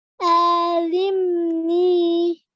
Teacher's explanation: stress on the lam because there is a tashdid